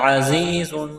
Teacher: زا میں سیٹی کی آواز پیدا کریں گے